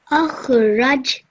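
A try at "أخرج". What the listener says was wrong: The ra has a dhamma, so we would pronounce it as ruj. With the kha, I didn't say ukh. That would be wrong because kha is not one of those five letters in the kalkala rule.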